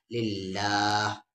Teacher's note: اللہ کا لام یہاں لائٹ پر آ جائے گا، ہلکی ساؤنڈ سے ہوگی کیونکہ اللہ کے لام سے پہلے زیر ہے